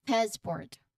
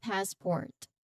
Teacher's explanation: the emphasis is on first syllable of course.